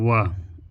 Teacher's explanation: वकार यानी व को वकार कहते हैं। इन्हें दंत और ओष्ठ के सहारे बोला जाता है। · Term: दंतोष्ठम